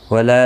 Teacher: لا الف مدہ ہے، ایک الف کی مقدار کے برابر کھینچ کر پڑھیں گے